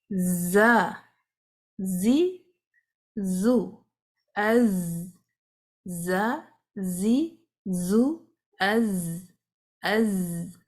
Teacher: زا جو ہے لائٹ لیٹر ہے، اس میں آپ کو بز کی آواز پیدا کرنی ہے، اس میں سانس جاری نہیں ہوگا